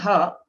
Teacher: there is no restriction of the air anywhere so the air which comes from our stomach comes out without any restrictions and hence it is called aspirate and these four are maha